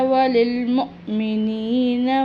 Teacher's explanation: यहाँ पर हमज़ा साकिन है, इसके ऊपर जज़म है, तो जहाँ जहाँ पर भी हमज़ा के ऊपर जज़म होती है वहाँ झटका दिया जाता